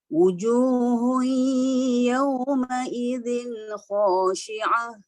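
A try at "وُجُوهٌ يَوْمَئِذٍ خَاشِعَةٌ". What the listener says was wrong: Okey, ha tu dah okey, tapi ain tu dia ternaik ke atas. Khashi'ah. Dia lain.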